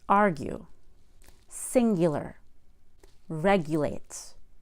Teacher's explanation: Also, we put a Y after the G and before a long U.